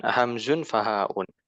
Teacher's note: hamzah dan ha, yang mana kedua huruf tersebut keluar dari aqsal halqi, tenggorokan bawah gitu ya